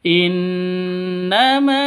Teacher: Innama ma panjang dua ketukan karena ada alif ya di sini ada alif ee diawali dengan fat fathah. Ada alif sebelumnya berharakat fathah. Maka panjang dua ketukan. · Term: Mad asli